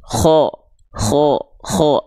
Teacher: kalau dia dibaca condong seperti vokal O, maka dia termasuk ke dalam huruf yang tebal